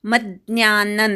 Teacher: मज्ञान म वर आघात अनुस्वाराचा अर्धा न